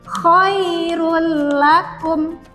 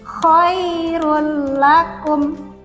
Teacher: Yang pertama ini contoh apabila ada tanwin bertemu dengan huruf lam, maka kita bacanya huruf tanwinnya ini kita leburkan ke dalam huruf lam dan tidak didengungkan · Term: idgham bila ghunah